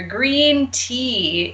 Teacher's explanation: for example all the way in the top left hand corner green tea is the highest vowel sound that we can make in our mouth